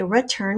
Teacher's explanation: some people say return which would be a schwa spelled with an e and that's okay too er is spelled you are in return